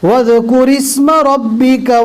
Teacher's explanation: الف کو نہیں پڑھیں گے، رو کو ڈائریکٹ سین سے ملائیں گے